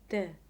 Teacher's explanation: sitting let's imagine that the air is moving the tongue and the tongue cannot stop it but can only lightly interrupted by touching the upper pallet quickly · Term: flap T